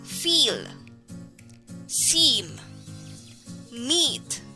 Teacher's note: the tongue is as far forward as possible in the mouth the middle part of the tongue is curved almost touching the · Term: tense vowel